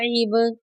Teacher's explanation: ऐन बा ज़ेर ईब, यहाँ पर बा साकिन है, बा साकिन पर कलकला करेंगे।